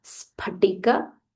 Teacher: This is not f, this is p. P, P with a aspirational sound.